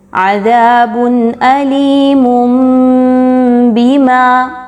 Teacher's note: غنہ کرتے ہوئے میم کی ادائیگی ہوگی، علیم بما، تنوین کی آواز ٹوٹلی میم میں کنورٹ ہو گئی۔ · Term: اقلاب